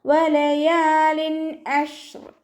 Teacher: തെൻവീനിന് ശേഷം ഇബ്ഹാറിൻ്റെ അക്ഷരമായിട്ടുള്ള ഐന് വന്നു. തെൻവീനിലുള്ള നൂനിനെ വ്യക്തമാക്കിയിട്ട് ഉച്ചരിക്കുക